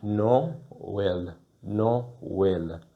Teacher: The syllables are pronounced really separately. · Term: accent tréma